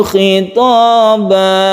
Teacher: Panjangnya satu alif saja kalau yang terakhir ini karena mad iwad cuma satu alif